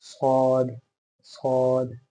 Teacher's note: ऐसा लग रहा है मुंह में कुछ मैंने रखा हुआ है, भरी हुई आवाज के साथ, सौद सौद, ठीक है। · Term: स्वाद